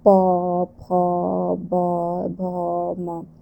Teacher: आगे हम लोग देखते हैं प वर्ग का। तो प वर्ग का उच्चारण स्थान क्या है? ओष्ठ है।